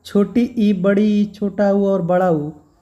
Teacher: वे स्वर जिनके उच्चारण में मुख बहुत कम खुलता है